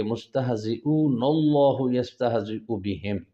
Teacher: تو دوسرا اللہ کا لام موٹا پڑھنا ہے